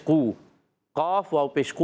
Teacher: قاف زبان کی جڑ اور تالو کے نرم حصے سے